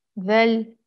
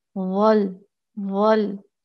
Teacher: कितना फर्क है ना? वेल बारीक है, वल मोटा है, पुर है, तो इसको मोटा पढ़ना है, पुर पढ़ना है